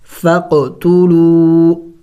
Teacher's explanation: واو مد ہے، چھوٹا مد بھی ہے، تھوڑا سا کھینچیں گے، اس الف کو نہیں پڑھیں گے.